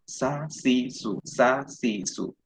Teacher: Tajam ya, tapi tidak berhembus, tidak terlalu berhembus seperti sod. Keluar ada suara angin-anginnya di sela-sela gigi-gigi bawah.